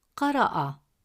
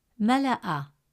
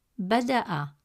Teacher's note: Alif Hamza carries a Fatha vowel, which helps the glottal stop reach its full sound, producing the A sound.